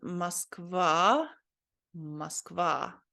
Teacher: So this is Moskva, Moskva, right? I think this O letter here is pronounced more like ah, because it doesn't have an emphasis on it here. So I think you're not supposed to say Moskva, but Moskva.